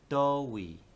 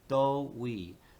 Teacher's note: we only changed that initial second tone into a first tone, right? So when you're writing it, you write do as do, but you wouldn't say that in this context because it's at the front of the sentence.